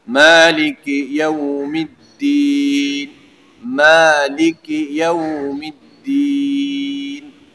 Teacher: دال کے اوپر شد ہے تو، اور دوسری بات یہ ہے کہ حروف شدیدہ میں بھی ہے، تو اس لیے اس کو ذرا سختی سے پڑھنا، شد کی وجہ سے مضبوطی اور حروف شدیدہ میں ہونے کی وجہ سے اس کے اندر شدت والی صفت۔